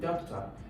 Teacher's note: you can see that the primary stress, doc, is actually longer than talk. So there is an emphasis, there's a stress on doc.